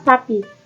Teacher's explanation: bunyi frikatif atau geseran apikodental atau laminoalveolar tak bersuara